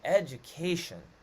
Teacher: that k is taking a little bit more stress it's a stronger beat